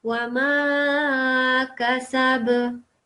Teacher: this kaf should not be longer than the sin and ba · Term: fatha